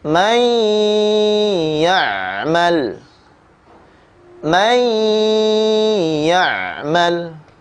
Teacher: nun sukun bertemu huruf ya. Maka membacanya dengan tempo gunnah yang dipanjangkan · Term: idgham bi ghunnah